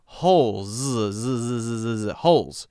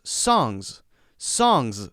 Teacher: at the end of the word the s is more often a Z sound